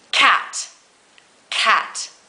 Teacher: this sound is made by pulling your tongue up at the back of your throat